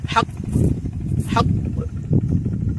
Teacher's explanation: কফ এর কালকালা শুনতেই পাওয়া যায় না, হুলকুমের মধ্যে, কণ্ঠনালীর মধ্যেই থেকে যায়